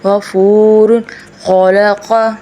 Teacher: اوپر والے حلق سب سے اوپر سے غین، خ جگہ جہاں گلا منہ سے جڑتا ہے